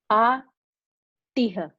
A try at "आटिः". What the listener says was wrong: Atiha. Atihi. Not Atiha. Visarga. Visarga. Visarga takes a sound of the preceding the letter, the vowel, which is E, Ikara. So Atihi.